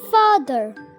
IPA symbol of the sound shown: ɑː